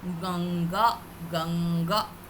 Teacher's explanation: Similarly Ganga, usually in Hindi we write it as ga, on then we put the dot and then ga. So but here it will have that sound of nga, because ga is coming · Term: Anuswara